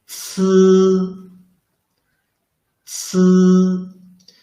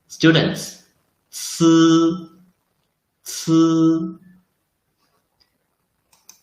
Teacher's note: The only difference is that c is an aspirated, unvoiced sound. The sound is very similar to the last sound of students.